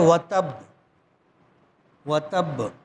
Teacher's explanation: با پر جزم ہے تو اس کو پڑھیں گے و تب قلقلے کے ساتھ